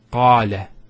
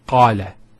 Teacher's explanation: Notice the elongation of the A sound.